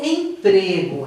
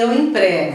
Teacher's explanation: se é um substantivo, você vai falar com som fechado